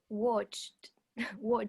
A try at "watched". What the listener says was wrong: Perfect. Perfect.